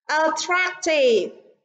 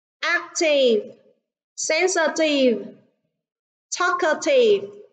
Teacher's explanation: attractive, trọng âm rơi vào âm tiết thứ hai. Còn ba từ còn lại, trọng âm rơi vào âm tiết đầu tiên.